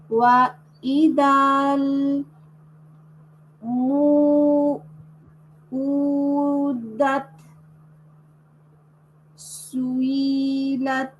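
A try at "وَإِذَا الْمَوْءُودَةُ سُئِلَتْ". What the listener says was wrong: আচ্ছা, ওয়া ইদাল মাউ মাত আছে না, মার উপরে ফাথা আছে তো, ওয়া ইদাল মাউ উ দা তু সুইলাত।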